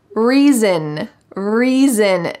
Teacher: notice that the s sounds like a z